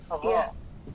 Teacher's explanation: lidahnya terangkat tapi tidak menempel ke langit-langit. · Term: infitah